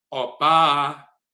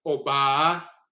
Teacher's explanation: For example, in the Akan language, the word for woman is Oba, Oba in the Asante dialect, O-B-A-A, and the first A is high, so Oba means woman